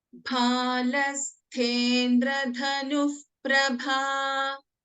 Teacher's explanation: In Bhalasthendra, bha and tha are Mahapranas.